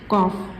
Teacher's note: जब हम जुबान की जड़ को सख्त तालू से लगाएंगे तो कफ अदा होगा।